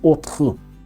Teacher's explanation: o som daquele R que é raspado na garganta, que é algo bem comum na pronúncia do francês.